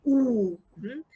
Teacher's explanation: The lips are closely rounded. Ooh, this is the vowel that has the most rounded lips.